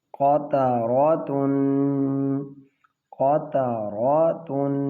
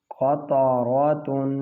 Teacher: یہاں پہ ہم نے غنہ کیا ہے کیونکہ آگے حروف حلقی نہیں ہے